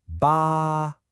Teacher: you've said your first word with that high flat first tone. · With that high, flat first tone, ba means the number 8.